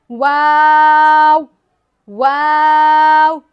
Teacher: दोनों हंठों को गोल करेंगे तो वाव अदा हो जाएगा। वाव दोनों होठों के गोलाई से वाव अदा होता है।